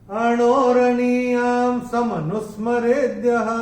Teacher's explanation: और दूसरे चरण में या के ऊपर अनुस्वार के बाद का अक्षर है स और अनुस्वार के बाद जब स आएगा तो अनुस्वार का उच्चारण होगा म